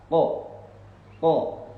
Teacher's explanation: keluarnya itu dari pangkal lidah bagian atas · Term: huruf qaf